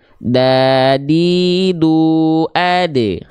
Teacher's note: huruf ta dan dal itu dia dilafalkan dengan keadaan yang tipis. Aula mulutnya lebih terbuka, pangkal lidahnya nggak naik. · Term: huruf dal